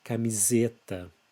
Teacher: be careful with the S between vowels. Always in Portuguese words, it has a Z sound.